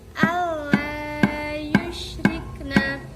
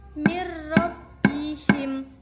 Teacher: Idgham bila gunnah artinya dibaca dengan tidak mendengung. Hukum bacaan dibaca dengan idgham bila gunnah apabila ada nun mati atau tanwin bertemu dengan salah satu huruf lam atau ro.